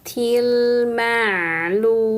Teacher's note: mad arid lukun panjangkan dulu lamnya karena dhamah ketemu wau sukun lalu sukunkan mimnya